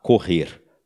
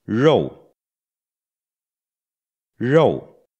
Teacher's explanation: gente fala correr hum o lábio mexe e isso não acontece no r do mandarim o lábio fica parado é só a língua